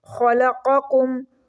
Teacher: خو کو ہم موٹا کر کے پڑھیں گے